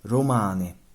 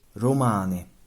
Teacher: in some varieties of Sicilian, d becomes r, an alveolar tap when followed by a vowel. That's a consonant you might associate with r more than d, especially at the beginning of a word.